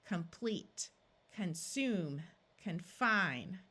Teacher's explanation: in English these O's are going to tend to schah and sound more like a short u rather than a clear a sound